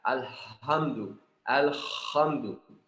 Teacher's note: Mim ini yang huruf gunnah. Ada suara keluar dari rongga hidung, ada. Bukan seperti yang ain tadi waktu kita bilang gak ada.